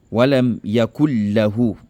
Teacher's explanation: C'est vrai que le tanwin est là, le nun sakina est là, mais tu ne fais pas de ghunna.